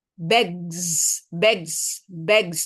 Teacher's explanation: Ini bunyi ini, ag. Kalau ditambahkan S itu kalau ngomongnya di slow motion, bentuknya tuh nggak tipis, tapi bunyinya sedikit mendengung. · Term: buzzing sound